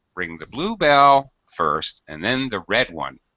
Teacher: we use higher pitch on the contrasting sounds because blue is describing Belle quite closely quite obviously adjective noun · you have a contrast which demands that you stress blue and red because you have a difference here